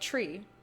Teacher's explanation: weird though think about the word tree it's spelled t-r-e-e but you say it tree with like an aspirated c-h